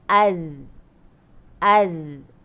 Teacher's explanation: kalau zal, dia lidah tu kena tinggal antara dua gigi. Dia lembut je sikit bunyi dia